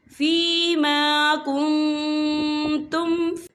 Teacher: نون ساکن کی آواز کو ناک میں چھپائیں گے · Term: اقفا